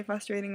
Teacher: I say frustrating wrong too, because I take the R out and I don't know why.